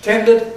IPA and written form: ˈtendəd (tended)